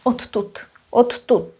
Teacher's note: Odtud, it's a funny way of pronouncing it, means from here, because t is voiceless, d is voiced, t influences d, d goes to t, and we end up with double t